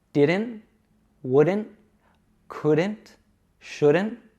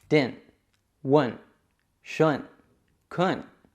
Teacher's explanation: Now, commonly in American English, we would pronounce this D as an American D, which is a quick flick of the tongue. It's very similar to the R in Latin languages like Spanish and Portuguese.